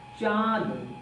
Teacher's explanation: तो जैसे लिखा गया चांद, तो जो लिखा गया है चांद, अर्थात बात करें चांद के उच्चारण में, चांद के उच्चारण में क्या हुआ, जो वायु है कहां से निकल रही है, मुख और नाक दोनों से निकल रही है। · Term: अनुनासिक